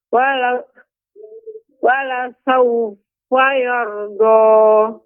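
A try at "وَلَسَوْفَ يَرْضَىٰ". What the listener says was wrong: Wala saufa yarda. Ya, do tidak boleh monyong Ibu. Tidak yardo, nggak boleh. Berbeda suara Ibu. Ketika Ibu membaca dengan dimonyongkan, suaranya akan seperti ini. Yardo, ya. Bedakan dengan yardo, do, seperti itu. Yardo dengan yardo, ya seperti itu.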